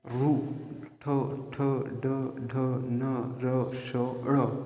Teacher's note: ओळखायच कठोर ताल्लू व कोमल ताल्लू यांच्या मधल्या भागाला मृदा म्हणतात. जे वर्ण उचारताना आपल्या जिभेच्या शेंडा या मृदाला चिकटतो त्यांना मृदन्य वर्ण म्हणतात.